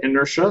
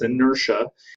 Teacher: So the TI, remember, is a sh sound, so it's inertia.